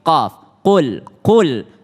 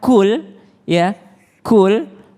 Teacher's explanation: qf itu beda dengan Kaf ya ketika qf itu lebih tebal sedikit